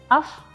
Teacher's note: pita suara terbuka dan tidak bergetar juga aliran nafas berhembus saat diucapkan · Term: hamas